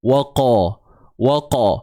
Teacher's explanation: huruf qaf ini adalah daripada pangkal lidah, okey, yang naik ke lelangit lembut belakang tu. Dia hampir dengan anak tekak kita lah.